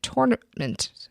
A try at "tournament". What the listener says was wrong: tournament. You added an Okina in tournament.